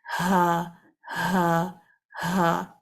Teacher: ہا میں ووکل کورڈ کھلے رہتے ہیں لیکن آپس میں قریب ہوتے ہیں دونوں سائیڈز، اور اس میں ایک وائبریشن آتی ہے۔ آپ نے اس کو ہا ہا ہا اس طرح سے پڑھنا ہے۔